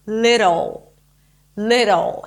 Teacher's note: like a d it's not little it's not a dark D it's this very light light D sound that actually sounds like a sound like a Spanish R